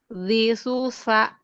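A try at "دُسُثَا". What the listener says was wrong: Tha-nya jadi tha. Tadi sya. Jadi tha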